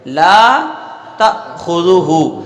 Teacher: ٹھیک ہے، تو اس لیے یہاں پر لام کو جو ہے اس پر بھی الف سے کھینچنا ہے، لا تأخذہ پڑھیں گے، لا تأخذہ، تو لام پر الف ہے، الف کو ایک الف کے برابر یعنی دو حرکت کے برابر کھینچ کر پڑھا جائے گا۔ ٹھیک ہے، تا پر جو ہے زبر ہے اور اس کے اس بعد حمزہ ہے، تو جس حرف کے ساتھ حمزہ ہو اس کو جھٹکا دے کے پڑھتے ہیں۔